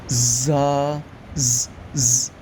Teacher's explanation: زا، سین، صاد، ان کو جب ادا کریں گے تو آواز جو ہے وہ سیٹی کی طرح تھوڑی سی تیز ہو جائے گی۔